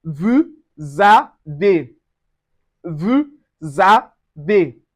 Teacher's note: The S also changes to Z and it gives us vu za de. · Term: liaison